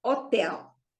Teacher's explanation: the stress is on the last syllable because it ends with the L